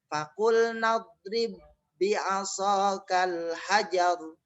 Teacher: Jadi cara membacanya ba yang pertama tidak dikolkolahkan.